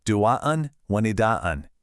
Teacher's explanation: Instead of saying them as two separate things, the N sound just kind of melts or merges right into the wa that follows. This creates this really smooth, nasal transition, a seamless connection, rather than two choppy sounds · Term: idgham